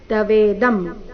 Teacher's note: ತವೇದಂ ಇಲ್ಲಿ ಅನುಸ್ವಾರದ ಉಚ್ಚಾರಣೆ ಮ ರೀತಿ